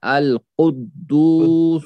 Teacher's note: قاف موٹا اور اونچا، دال واو پیش دو واو مدہ.